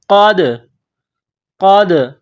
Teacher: دال ساکن ہے تو یہاں پر قلقلہ کریں گے